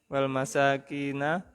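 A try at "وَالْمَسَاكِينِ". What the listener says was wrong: Wal masakini, ada alif lamnya. Wal masakin itu nunnya nun lam, ya kan? Bukan nun jamak mudzakkar ya toh. Jadi masakini ya. Jangan tertipu tahu masih samar, oh ini ya nun jamak mudzakkar, jadi nunnya fathah, bukan ya.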